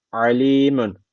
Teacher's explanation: A boğazdan unutmayın. Boğaz harfidir bu.